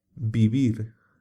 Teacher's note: V sonaba en español igual que la v francesa o inglesa hoy el sonido de la letra V no se distingue del sonido de la letra b